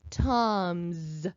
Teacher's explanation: the s is making its voiced sound